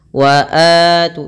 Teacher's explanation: memanjangkan huruf a-nya dua harakat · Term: mad badal